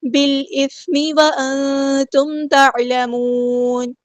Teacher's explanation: نون ساکن کی آواز کو یہاں پہ ہم چھپا دیں گے